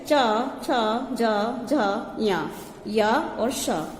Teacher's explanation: इस सूत्र में ही ये सारे हमारे आ जाएंगे, तो इनका उच्चारण स्थान होता है तालु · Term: तालव्य